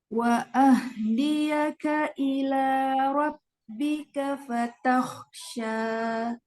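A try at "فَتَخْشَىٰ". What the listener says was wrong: Nah, kok juga sama. Dia mengalir suaranya. Fatakhsha. Jadi kita jangan buru-buru nih baca kok sukunnya. Fatakhsha gitu.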